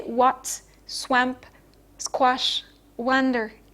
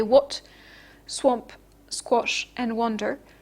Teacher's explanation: when the vowel is preceded by a w sound, it's rounded. Okay, the w is a bilabial consonant. · It's pronounced with both lips coming together. And this round feature of the W sound influences the pronunciation of the A vowel, which is rounded into O